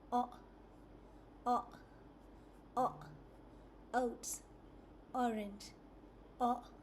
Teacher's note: The mouth is rounded and open. The tongue is in the middle of the mouth, not touching any part.